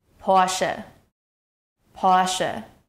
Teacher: To properly pronounce the German car brand Porsche, the first syllable should be pronounced like por with a short O sound, followed by sh with a soft S sound. In German, the stress is on the first syllable. · the first syllable should be pronounced like Por with a short o sound, followed by shuh with a soft s sound.